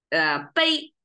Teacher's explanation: when it turns from a noun, which is bei, the back, the body parts, into the action, the verb, bei, that turns into flat tone